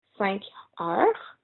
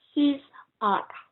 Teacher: you don't pronounce the S after every heure. We don't pronounce them.